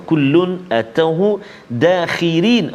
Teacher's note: Ra dekat situ pada kalimah dakhirin kita baca nipis tarqiq. Kenapa? Sebab ra baris bawah.